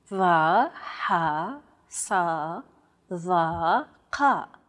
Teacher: They sound like the D, H, S, T, and Q sounds respectively, except much more tense because the throat is constricted. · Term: emphatic consonants